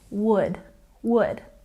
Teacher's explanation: Don't say the L in these words. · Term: silent letter